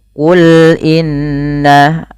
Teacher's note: alirkan ketika melafalkan lam, jangan tebal, jangan qul, tapi sesuaikan dengan makhraj lam itu tipis.